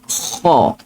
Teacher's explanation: Terangkat pangkal lidah kita yang kat belakang. So huruf kha, terangkat pangkal lidah. Kha, tebal lah dia.